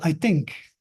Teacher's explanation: you have a stop instead of a fricative